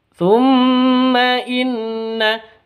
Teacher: inna juga sama nun tasydidnya berdiri sendiri maka ghunah musyaddadah dengung dua Dua ketu dua ketukan.